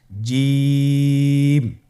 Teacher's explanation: এর মাখরাজ হলো জিহ্বার মধ্যখান, তার বরাবর উপরের তালুর সঙ্গে লাগিয়ে উচ্চারিত হয়